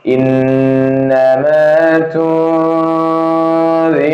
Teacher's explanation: Nun sukun bertemu dengan huruf dzal ikhfa hakiki. Bacanya samar